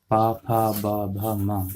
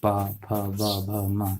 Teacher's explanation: पा वर्ग में पा फा बा भा मा, ये जब हम पा फा बा भा मा जब इनका उच्चारण करेंगे तो हमारे इनमें दोनों होंठ जो है एक दूसरे को स्पर्श करते हैं